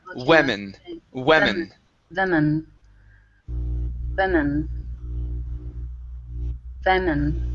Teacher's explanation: When we have this word, we start off with a we instead of wu. It's we and then men.